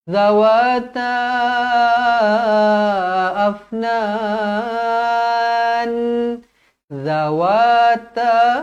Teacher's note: jadi bila terpisah Mad Jaiz munfasil empat atau lima harakat